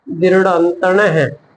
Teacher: ਵਿਸਰਗਾਂ ਚਿੰਨ ਨੇ ਇਸ ਦਾ ਉਚਾਰਨ ਜਿਹੜਾ ਹੈ ਹਾਹੇ ਦੇ ਰੂਪ ਦੇ ਵਿੱਚ ਕੀਤਾ ਜਾਂਦਾ ਹੈ